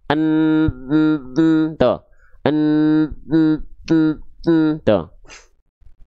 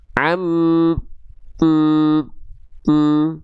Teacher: Nah, berarti tandanya itu yang disebut dengan gunah. Suara yang melipir ke rongga hidung mengakibatkan atau menghasilkan suara yang sengau adalah huruf nun dan mim.